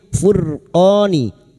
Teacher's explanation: Ra sukun yang didahului domah dibaca tafkhim